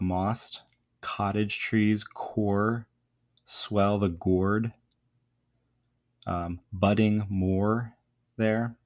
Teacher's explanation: a heavy reliance there on kind of longer O sounds and then the sibilant S